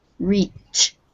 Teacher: it's voiceless yes the sound stays in your mouth